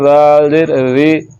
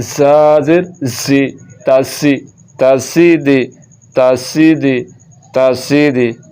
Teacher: اگر اس کو پڑھ دیا دال زیر ری تو اب یہ دال پڑھا جا رہا ہے جو کہ غلط ہے. تو دال نہیں پڑھنا, زا پڑھنا ہے, سیٹی کی آواز کے ساتھ پڑھنا ہے اور اس کو پڑھنا ہے زا زیر زی تاسی تاسیدی تاسیدی تاسیدی.